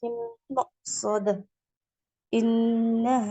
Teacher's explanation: இன்னஹூன் முஷத்ததா இருக்கு சோ குன்னா பண்ணனும்